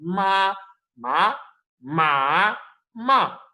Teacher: first tone is the straight tone, second tone is the rising tone, third tone is the falling rising, and fourth tone is falling tone.